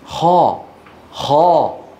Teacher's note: تفخيم الخاء ضغط صوتها الى قبه الحنك لا زم الشفتين او ضمهما الى الامام